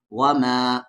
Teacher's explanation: مد کے سمبل کے بعد حمزہ ہے تو 3 سے 4 الف کے برابر کھینچیں گے